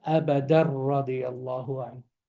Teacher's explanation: The tanween becomes the nun. And then I have a ra with the shadda. So if I have an empty letter before the shadda, what happens? The letter disappears. So it becomes abadar radiyallahu anhu.